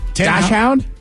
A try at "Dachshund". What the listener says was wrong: Dash. You say dash? It is Dax. D-A-K-S. Hund. Dachshund. So the correct pronunciation is Dachshund.